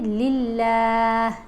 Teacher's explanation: موٹا اس لام کو پڑھتے ہیں جب اس لام سے پہلے حرف کے اوپر زبر ہو یا پیش ہو، اور اگر اس لام سے پہلے حرف کے نیچے زیر آ جائے تو پھر یہ درمیان والی لام باریک پڑھی جاتی ہے۔ یہاں آپ دیکھ رہے ہیں لام کے نیچے زیر ہے تو ہم پڑھیں گے للہ۔